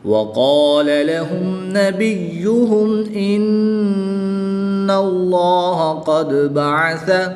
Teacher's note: نون مشدد میں ہمیشہ غنہ ہوتا ہے تو یہاں پر غنہ کر کے پڑھیں گے